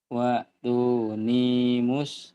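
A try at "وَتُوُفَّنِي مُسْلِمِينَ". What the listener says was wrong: Kurang neken. Waktu nih panjangnya hati-hati. Kurang neken ya dilatih, kurang penekanan materi.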